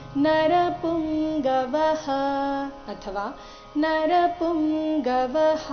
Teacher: ವ ನಂತರ ಇರೋ ವಿಸರ್ಗದ ಉಚ್ಚಾರಣೆ ಹ ಅಥವಾ ಹ ಎರಡು ಸರಿಯಾಗಿದೆ